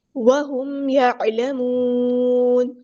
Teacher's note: عین کو وسطی ہے لیکن مل تھروٹ سے ادا کریں گے، اور ہم نون کو ساکن کر دیں گے وقف کرتے ہوئے۔